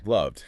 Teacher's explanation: Or love ends in V, voiced, becomes loved. · Going from a voice sound like V straight into another voice sound D is just smoother for the mouth than switching to an unvoiced T. It connects better. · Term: D sound